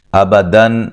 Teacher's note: یہاں دن پہ نون تنوین کا اظہار ہو رہا ہے، غنہ نہیں کریں گے · یہ دونوں حمزہ کو تحقیق سے پڑھیں گے، تحقیق مین واضح پڑھیں گے، ٹھیک ہے، نرم نہیں پڑھنا۔